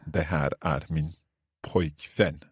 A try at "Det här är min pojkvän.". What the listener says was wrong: Perfekt.